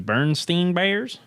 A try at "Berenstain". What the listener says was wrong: Berenstain. It's Berenstain. Spelled with an A, not an E.